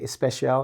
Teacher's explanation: This is how you would say it, because a lot of times people from different language groups will have problems saying it, because if you speak Spanish, for instance, they will say especial instead of special, because the ES is the sound they make